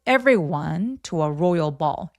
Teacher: to는 중요한 키워드 아니니까 힘 빼고